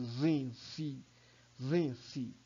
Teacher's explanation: o Z e o C, que são fonemas muito próximos ali, e cria um choque, parece que você vai fazer zzz. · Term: choque fonético